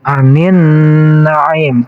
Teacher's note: Jadi alif lamnya tidak dibaca, ya langsung kepada huruf nun. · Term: alif lam syamsiah